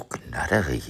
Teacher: Low Saxon double D or T is authentically pronounced with the American flap, which is close to Low Saxon R between vowels. So people confuse them and German speakers hear and write them as D.